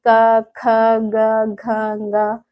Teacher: गले से आवाज आ रही है ना जो है गले से गले को स्पर्श करके यह आवाज निकल रही है · ख ग घंग वाला यह हमारा कहां से उच्चारित होता है यह हमारा होता है कंठ से उच्चारित होता है ठीक मुख में जो कंठ है गला है यहां से यह उच्चारित होता है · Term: कंठ स्पर्शी व्यंजन